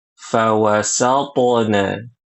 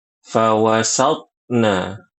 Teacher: huruf tho sukun harus qalqalah fawasna. Jangan baca fawasatna.